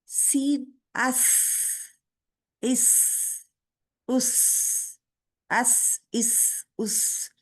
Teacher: सीन में सबसे ज्यादा सीटी पाई जाती है